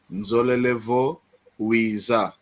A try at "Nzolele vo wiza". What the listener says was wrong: Muito bom.